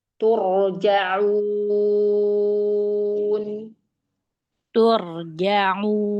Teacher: Perhatikan nun sukunnya nun jangan lama-lama